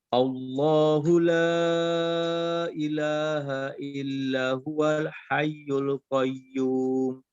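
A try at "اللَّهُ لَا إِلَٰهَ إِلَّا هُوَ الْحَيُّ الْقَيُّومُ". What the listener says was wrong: Oke, illanya agak panjang sedikit. Illa huwal hayyul qayyum. Cuman kurangi panjangnya sedikit. Illa huwa. Oke, sekarang di hayyul qayyumnya ketika dia ada tanda tasdid, masing-masing ditahan 1 ketukan. Allahu la ilaha illa huwal hayyul qayyum.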